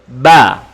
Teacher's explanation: Ba makhrajnya berasal dari asyafatani, yakni bibir. Ba, bibir katup kemudian buka, ataupun bibir rapat kemudian dibuka. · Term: huruf ba